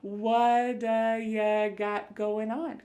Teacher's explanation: This is really typical of American English, where a T that's surrounded by vowel sounds is going to change to a D. It's called a flapped T, and it just kind of rolls off your tongue in a smooth way.